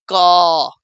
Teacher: कंठ से बोलने में क वर्ग आता है।